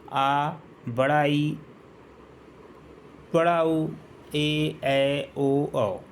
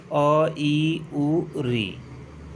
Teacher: इनके उच्चारण में हरस स्वर की अपेक्षा दो गुना समय लगता है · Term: दीर्घ स्वर